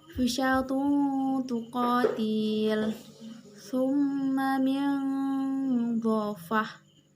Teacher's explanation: suara nun atau tanwin tetap terdengar namun samar, yakni antara izhar dan idgham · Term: ikhfa